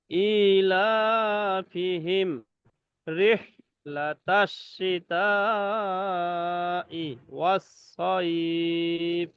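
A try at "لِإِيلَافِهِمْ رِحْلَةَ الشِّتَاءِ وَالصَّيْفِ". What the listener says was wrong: জি এই যে প্রথমে হচ্ছে প্রথমে দুইটা টান আছে, দুইটা টান একই কারণে, একই সমান টান, একটা একটু কম বেশি হয়ে গেছে। জি দুটোটাই এক সমান টান রাখতে হবে ইনশাল্লাহ।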